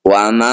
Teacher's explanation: bunyi mim Pertama masukkan mim kedua dengungkan dua harakat